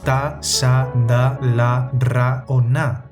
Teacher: alveolares (el alveolo es donde los dientes se unen al cráneo) que son las consonantes más comunes como /ta/ /sa/ /da/ /la/